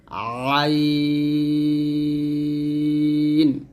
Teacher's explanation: আইনটা হলকের মাঝখান থেকে চাপ দিয়ে চিকন করে উচ্চারণ করতে হবে